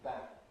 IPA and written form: bæn (ban)